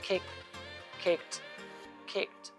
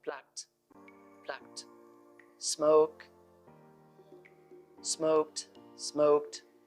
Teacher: If a word ends with k sound like kick, kicked, kicked, then the ed ending is pronounced t.